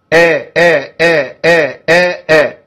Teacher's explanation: لو هعد ست حركات زي كلمه الضالين